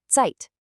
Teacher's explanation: the letter Z is always a sharp T sound, like the sound at the end of the word cats, so the word for time is Zeit.